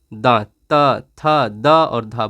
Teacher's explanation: त थ द और ध बोल कर के देखो इसमें दांत सटेगा